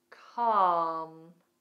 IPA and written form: kɑːm (Calm)